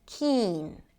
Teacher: A K sound, a high E, and an N.